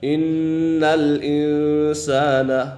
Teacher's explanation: نون کے اوپر غنہ ہے کیونکہ نون مشدد ہے، نون مشدد میں ہمیشہ غنہ ہوتا ہے